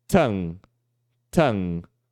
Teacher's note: O que a gente faz é a gente vai fechar um pouquinho a garganta aqui, ó. A gente vai tentar pegar a parte de trás da nossa língua e vai fechar ele aqui com a uvula